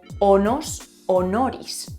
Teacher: En latín existe un cambio muy famoso. Las S intervocálicas se convierten en Rs, o sea, la S que está entre dos vocales pasa a ser una R.